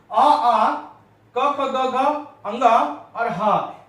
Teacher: ये सभी कंठ से बोले जाते हैं, कंठ से बोले जाते हैं।